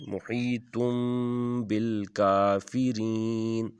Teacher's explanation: اس کو محیطن نہیں پڑھیں گے، میم کے آواز کے ساتھ پڑھیں گے، محیطم بالکافرین۔ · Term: اقلاب